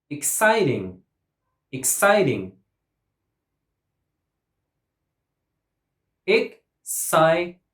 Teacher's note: 3 syllables and the stress goes on the second syllable.